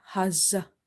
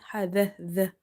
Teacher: And this zal is from the tip of the tongue when it touches the inner edges of your top two front teeth. Never make it like za. You have to avoid this buzzing sound, and you have to stop the airflow.